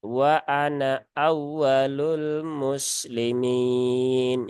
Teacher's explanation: pada lafaz Ana ya di sini kalau di sambung ya nanya diwasolkan nunnya terbaca pendek